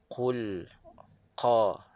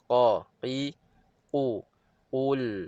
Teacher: Okey, yang pertama qul huwallah pada huruf qaf, dia keluar daripada pangkal lidah. Okey, pangkal lidah kita sentuh pada lelangit lembut dan ianya berdekatan dengan anak tekak. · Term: solid